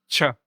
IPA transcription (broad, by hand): tɕ